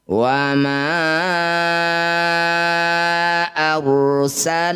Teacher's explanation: Ma-nya panjangkan, yang bertanda layar ini panjangkan 5 harokat atau 5 ketukan. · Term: mad jaiz munfasil